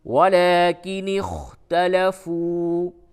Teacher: فا واو پیش فو، واو مدہ کو کھینچیں